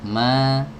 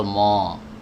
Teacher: cara melafalkannya itu dengan menjauhkan kedua rahang atas dan rahang bawah ini dijauhkan dibuka gitu ya bukan ditarik kesamping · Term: Fatah mutawasitah